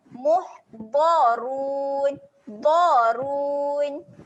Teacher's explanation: Okey, huruf dhad berbaris atas, huruf dhad tebal. Okey, jangan lupa makhrajnya juga. Tepi lidah naik ke geraham atas.